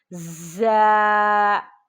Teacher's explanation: اس کو سختی سے پڑھتے ہیں، اس میں سیٹی کی آواز ہوتی ہے